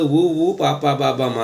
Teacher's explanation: పెదవి సహాయంతో పలికే అక్షరాలు ఊ, ఊ, పా, పా, బా, బా, మా అనేవి ఓష్ట్యాలు. సో పెదవులు రెండు కలుస్తాయి.